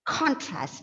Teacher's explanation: It's a word with 2 syllables. It's a noun. So obviously, the first syllable has to be stressed.